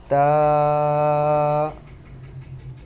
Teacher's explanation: اس کا ہم نے جو پیچھے مخرج پڑھا تھا، اس کا مخرج یہ ہے کہ زبان کی نوک اور اوپر کے دانتوں کی جڑ سے ادا ہوتا ہے